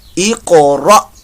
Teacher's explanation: حمزہ ساکنہ آنے کی وجہ سے یہاں پر جھٹکا پیدا ہوگا۔ یہ قاف جو ہے، اس قاف کے اندر جو ہے وہ قلقلہ ہوگا، قاف ساکن قلقلہ۔ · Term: حمزہ ساکنہ جھٹکا